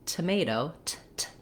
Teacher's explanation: So first of all, the T sounds in tomato have two different sounds, and they follow the rules and patterns for American English, which is the first letter T in tomato is what's called an aspirated T. It sounds like T, and there's a puff of air. So make sure when you're saying tomato, T, T, you can feel a puff of air coming out for that first T. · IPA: /tʰ/